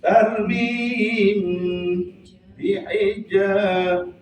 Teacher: Mim sukun makhrajnya di bibir, ya, namanya pengayaan. Baik, mimnya di bibir bagian luar, baknya bibir juga, maka disebut ikhfa syafawi.